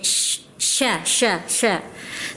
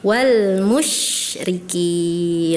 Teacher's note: punya sifat tapasy dia banyak udaranya di mulut